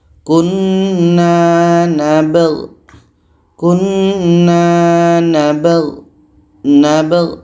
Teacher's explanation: Ba hukumnya qalqalah, ada pantulan. Gha pun harus dibaca jelas.